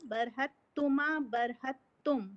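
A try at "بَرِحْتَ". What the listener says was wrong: پہ ہا کے اوپر زبر لگا رہے ہو، ایسا نہیں ہے۔ ہائے پہ جزم آئے گا، براہتا براہت تما براہت،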